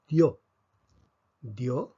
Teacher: va en la vocal cerrada tomemos el caso de yo dios la fuerza está sobre la o por lo tanto aquí tenemos un diptongo